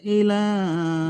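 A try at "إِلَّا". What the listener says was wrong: ইলা নয়, ইল্লা, হামজাটি লামের সাথে যুক্ত হবে, লামের মধ্যে তাজদিদ আছে।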